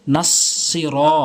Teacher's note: না, শুরু থেকে, ইহ দাল জেরে দি, নুন সদ জবর নাস, সতের উচ্চারণ সঠিকভাবে করবেন, জিব্বার আগা সামনে দুটি দাঁতের আগা , নাস সির, র এক আলিফ টানবেন, ইহদিনাস সির, তলাম জবর